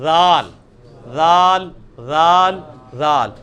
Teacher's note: اس کو نرمی سے نکالنا ہے، اسی مخرج سے نکلے گا جہاں سے ثا نکلا ہے